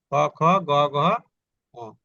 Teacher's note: আর এই ক খ গ ঘ ঙ, এই পাঁচটা যখন আমরা উচ্চারণ করি তখন ওই যে জিহ্বার গোড়ার দিক থেকে এটা শুরু হয়। জিহ্বার গোড়ার দিকে নরম তালুর পশ্চাৎ ভাগে স্পর্শ করে যায় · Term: কণ্ঠস্পর্শধ্বনি